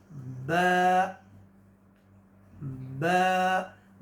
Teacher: با کی مخرج دونوں ہونٹ آپس میں ٹچ ہوں گے